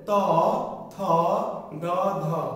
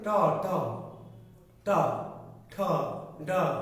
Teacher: তাহলে ট ঠ ড ঢ বলতে আমাদের দাঁতের গোড়া বা দাঁতের মূল লাগে, প্লাস কি লাগে? জিহ্বার উল্টানো অগ্রভাগ।